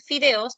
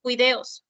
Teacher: se observa una alternancia consonántica entre la fricativa labial sorda con la fricativa velar sorda